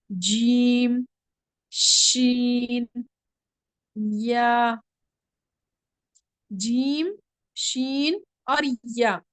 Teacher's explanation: ये जबान का वस्त यानी कि वस्तुल लिसान और ऊपर के तालु से अदा होते हैं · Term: हुरूफ शजरिया